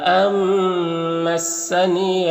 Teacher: یہاں پر نون ساکن کے بعد میم حروف یومن میں سے تو نون کو اس میم سے ملا کر غنہ کے ساتھ میں پڑھیں گے، اس کو ادغام ناقص کہتے ہیں۔